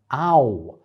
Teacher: starts all the way at the bottom as a central back ah and goes up to the oh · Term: diphthongs